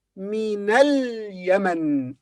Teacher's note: Here, this is min, from, but when we join it with the following word, we say minal Yemen. And even this alif in the beginning of al-Yemen becomes silent.